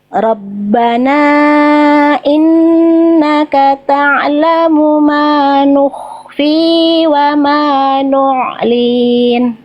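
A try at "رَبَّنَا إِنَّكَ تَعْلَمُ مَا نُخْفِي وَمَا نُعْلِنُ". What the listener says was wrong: Nyalin wa ma nu'lin. Linnya panjang pendek? Kepanjangan. Jadi cukup satu harokat aja ya. Ma nukhfi wa ma nu'lin.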